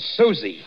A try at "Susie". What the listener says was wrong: Susie, you make it so it rhymes with floozy. That is not nice.